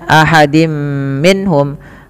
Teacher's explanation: tanwinnya dimasukkan ke huruf mim dan ditahan